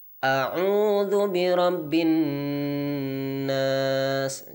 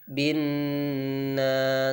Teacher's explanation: Jadi bin nas ditahan 2 harokat. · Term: nun tasydid